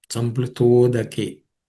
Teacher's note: Samplita udake, the tha plus u becomes to.